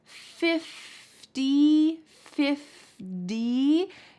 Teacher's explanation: Often times when we have TY, it's going to sound like D, just like the word 50 or party.